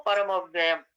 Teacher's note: व और य संयुक्ताक्षर से पहले वाला वर्ण दीर्घ हो जाता है, तो परमव्ययम् ऐसे पढ़ते हैं, उस पे बल दिया जाता है। म यद्यपि ह्रस्व है, म में जो अ है, लेकिन फिर भी दीर्घवत उच्चारण होता है